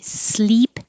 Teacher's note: little lower and the tongue's up in the front sin sleep the tongue is very high